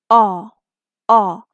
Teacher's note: our 14th sound this is the short v o a a mouth soft and open wide tongue is at the back and it's a quick voice sound